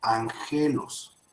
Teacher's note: una gama antes de otra se pronuncia como ni, o sea, N. Entonces, de ser agelos, se tiene que convertir o se pronunciará como angelos.